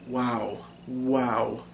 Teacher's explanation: technically there's not really a point of articulation even though the tongue is moving and it's kind of affecting the vowel sound wow wow those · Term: glide